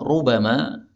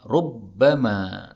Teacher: rubama, ini boleh ditasydid menjadi rubbama dan terjemahnya tidak berubah.